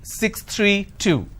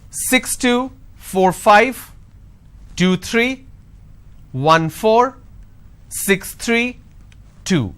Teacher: the last unit of your string should be louder but a drop tone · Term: intonation